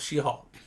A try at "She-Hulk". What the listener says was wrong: every time you say shehulk I think you're saying shehawk